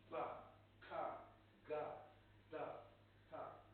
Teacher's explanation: you close all the holes out, maybe both your nose and your mouth. You increase the pressure inside this cavity, and then you let it explode. So these things are called actually plosive, okay?